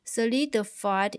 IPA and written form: sə'lɪdəfaɪd (solidified)